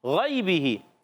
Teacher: غین موٹے حروف میں سے حروف مستعلیہ میں سے موٹا ادا کریں گے